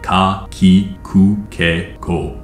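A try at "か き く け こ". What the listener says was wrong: The one thing I might say is that you don't need to put as much emphasis on the K syllable.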